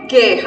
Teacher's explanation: Eu não escuto o som do U. Já sei que eu tenho um dígrafo.